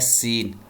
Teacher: جب سین آپ ادا کریں گے تو سیٹی کی آواز نکلے گی ، سین دونوں دانتوں کو ملا کر، اور زبان کی نوک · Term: اصوات الصفیر